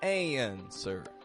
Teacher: The American accent makes this subtle transition that sounds like y between the A and the N. An. And then a flat sir. · The W is not pronounced. It totally disappears.